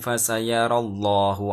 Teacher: Di situ terdapat hukum bacaan tafkhim, yang mana terdapat lafdzul jalalah, lafadz Allah yang sebelumnya berupa harokat fathah. Maka lam jalalah harus dibaca tafkhim atau tebal.